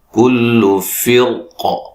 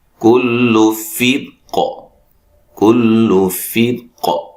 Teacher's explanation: اس کی را کو ہم موٹا بھی پڑھ سکتے ہیں، باریک بھی پڑھ سکتے ہیں وقفاً